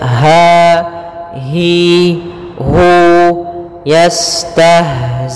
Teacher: Kemudian dia sifat ha yaitu sifat rokhawah juga, dan dia makhrajnya huruf ha kita keluarkan dari pangkal tenggorokan kita, pangkal tenggorokan